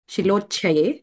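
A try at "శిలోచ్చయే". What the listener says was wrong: శిలోచ్ఛయ దగ్గర ఆ చా ఒత్తకూడదు. మూర్ఛతి దగ్గర చా ఒత్తు, ఈ శిలోచ్ఛయ దగ్గర చా ఒత్తు లేదు ఏమో.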